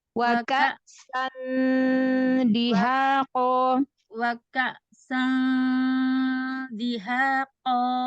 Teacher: makhrajnya ujung lidahnya jangan nempel ke makhraj huruf nun. Kasih jarak biar dia samar ya. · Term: ikhfa